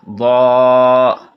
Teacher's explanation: ضاد بھی جو ہے یہ بھی حروف مصالیہ میں سے ہے، اس کو بھی ہم اس لیے پر پڑھ رہے ہیں، موٹا پڑھ رہے ہیں